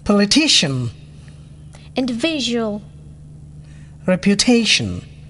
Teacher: four syllable third syllable stressed